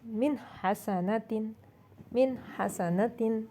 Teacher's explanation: اور اسی طرح ہا کی مثال ہے من حسنۃ، من حسنۃ، وسط حلق سے ادا ہونے والا ہا ہے، من حسنۃ، نون ساکن کے بعد ہا آیا اس لیے نون کو واضح کریں گے، من حسنۃ۔